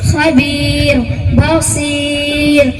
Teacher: را ساکن سے پہلے یا ساکن ہے، اس لیے ہر حال میں باریک ہوگی